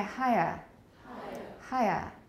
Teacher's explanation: can you hear three vowels in british it can be three vowels